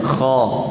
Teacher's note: Kha berbaris atas dan ianya perlu ditebalkan. Kha. Ramai di kalangan kita yang menyebut kha, kemudian huruf ra, kemudian huruf yang lain apabila berbaris atas dia termuncungkan mulut.